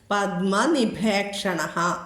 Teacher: നീ ആദ്യ അക്ഷരം ദന്ത്യമായിട്ട് ഉച്ചരിച്ചോളൂ